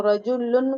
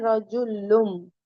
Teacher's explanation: नून को मीम से बदलकर गु्ना और इफा के साथ पढ़ना चाहिए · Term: इकलाब